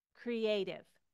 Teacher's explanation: I bring the T from that explosive T sound down to a D sound